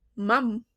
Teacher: Because when we produce sounds like mum, okay, like the M sound, um the air goes through the nose or the nasal cavity